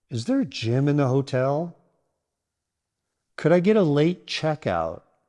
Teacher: Rising intonation signals you're asking a question.